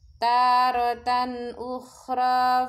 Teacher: tanwin bertemu huruf alif disebut bacaan idhar halki, dibaca jelas tanwinnya karena bertemu huruf alif